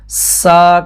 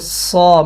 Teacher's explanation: سین میں اور صاد میں آواز کے وہی باریک اور موٹے کا فرق آ جائے گا، یعنی کہ سین کو اگر ہم سا کریں اور یہی سا کو صا موٹا کر دیں تو یہ صاد کی آواز بن جاتی ہے